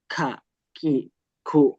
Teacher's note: Kalau kaf, dia menyentuh bagian yang keras, bagian yang kering, yang nanti mengakibatkan dia mengeluarkan udara.